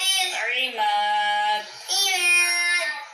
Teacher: عماد کے میم کو کھینچ کے پڑھیں گے، یہاں پہ الف مدہ ہے